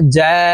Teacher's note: জিম হরফ জিহ্বার মধ্যখান থেকে উচ্চারণ করব কারণ জিমের মাখরাজ জিহ্বার মধ্যখান থেকে হবে